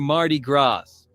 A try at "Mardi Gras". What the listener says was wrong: He pronounced the S in Mardi Gras. It's not Mardi Gras.